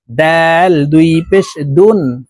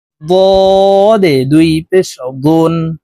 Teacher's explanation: ডাল হরফ পাতলা ভাবে উচ্চারণ করব তদ হরফ মোটা ভাবে উচ্চারণ করব